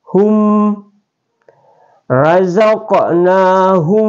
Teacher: huruf mim sukun ini dibaca dengan jelas tidak dengung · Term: izhar syafawi